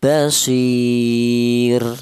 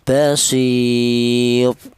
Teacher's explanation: Kemudian basir ini ada 2 bacaan, yaitu tentang roknya ini ya. Di mana rok mati ini dibaca tarkik atau dibaca tipis, cara bacanya basir, seperti itu.